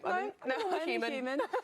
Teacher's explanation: one surprising feature is the use of the H. Now in most British English accents actually it's not used but in RP it is used